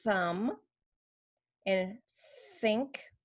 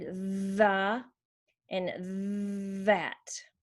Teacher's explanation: Sometimes the voice is off, like in the word thumb and think. Sometimes the voice is on